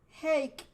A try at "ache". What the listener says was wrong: Not an H sound, but just ache, ache.